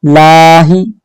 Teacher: हा जो है इसको बिल्कुल हल्की सांस से पढ़ेंगे